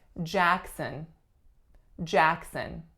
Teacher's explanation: we have Jackson Jackson two syllables winner is on the first the first sound is a tense a sound and the second syllable is what schwa